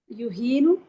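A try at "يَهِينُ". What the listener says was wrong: this is family 1. Should not start with dhamma. So think about what? Qala. So hana, ya, yahunu if it was wow. ya, then yes, yahinu.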